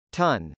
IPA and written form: tˈʌn (ton)